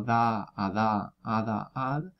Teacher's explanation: nuestra d también es interdental pero no produce el ruido de fricción no es lo mismo la de del español como dãa a